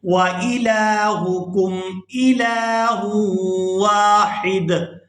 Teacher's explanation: لام کو کھڑی زبر کی وجہ سے کھینچ کر ادا کریں گے